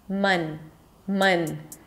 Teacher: A stressed schwa, a cup sound, the tongue is pushed forward, the lips are relaxed completely, don't round them,